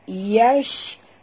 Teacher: Ya, huruf shim di sini sahabat. Kita kena bunyikan tafashi. Ya. Itu sifat pada shim tu. Keluarnya angin berhamburan.